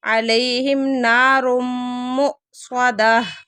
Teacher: تنوین کے بعد میم آ گئی ہے تو ادغام ہو رہا ہے غنّے کے ساتھ